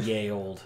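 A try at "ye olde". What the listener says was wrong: It actually wasn't ye. It's because they didn't have a character for TH. It was a thorn. So it was still pronounced the.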